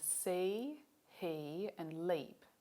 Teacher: This vowel is made at the highest point of the tongue for a vowel and also at the most forward point of the tongue that's used for making vowels. The lips are unrounded, which is why we call it a high front unrounded vowel